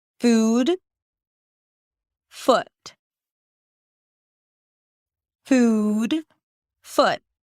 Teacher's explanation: The first thing I can tell you is that these two sounds are different in length.